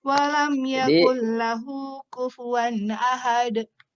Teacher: sempurnakan dalnya. Jangan ada tambahan hamzah di akhirnya.